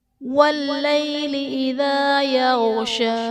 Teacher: واللیل میں یا ساکن سے پہلے حرف پر زبر ہے، یا لین کا قاعدہ ہے، اسے بغیر کھینچے بغیر جھٹکا دیے نرمی سے معروف پڑھیں گے